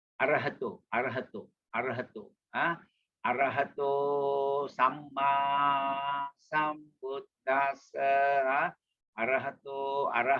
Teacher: the normal T as in Thai, as in TH, as in dental.